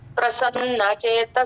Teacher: second line third పాద కూడా ప్రతోటి start అయిందండి పెదాలు బిగించి చెప్పాలి ప్రసన్న న కి న వత్తుక్షణం కనుక వత్తి పలకాలండి